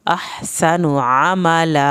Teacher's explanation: आमला आइन को हल्क से पढ़ना है। आमला लाम की जो ज़बर है वो पूरी पढ़नी है।